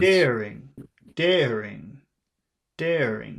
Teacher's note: the first one is long and the second one is short